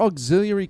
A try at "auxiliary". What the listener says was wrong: You added a few vowels to that word. Auxiliary. Auxiliary. Auxiliary. It's much prettier the way you say it. Auxiliary.